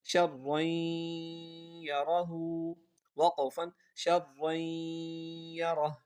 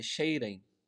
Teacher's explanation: شین کو را کے ساتھ ملانا ہے کیونکہ را کے اوپر شد ہے، تشدید ہے